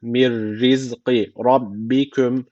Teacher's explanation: cezim nunundan sonra ra geldiği için idgamı bilagune tecviti var. Şu ra harfini şeddeyle okumamız gerekiyor.